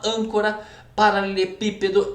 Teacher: Sílaba é uma proparoxítona, a sílaba tônica é a antepenúltima.